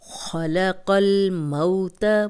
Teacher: قوف کو موٹا پڑھیں گے اور لام سے ملائیں گے، کیونکہ جزم پچھلے زیر زبر پیش والے حرف کے ساتھ ملا کے پڑھی جاتی ہے۔